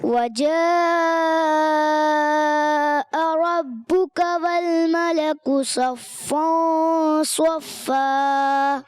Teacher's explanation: مد کو کھینچیں گے اور اس کے بعد حمزہ نہیں کھینچے گی. نہیں، حمزہ نہیں کھینچیں گے، حمزہ کو نہیں کھینچیں. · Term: مد متصل